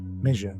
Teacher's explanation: Blade of tongue against hard palate, and voiced